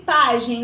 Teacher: Pagem tem a penúltima sílaba mais forte, então é uma paroxítona, certo? Só que pagem termina em EM.